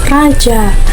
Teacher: Konsonan getar termasuk bunyi bersuara yang dibentuk dengan menempelkan ujung lidah tidak pada gusi, kemudian menghembuskan udara sehingga udara tersebut secara berulang-ulang menempel dan lepas dari gusi